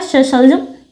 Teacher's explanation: जो प्राण वायु है वो कैसे स्पर्श करेगी तालू को इसलिए श का जो उच्चारण स्थान है वो है तालू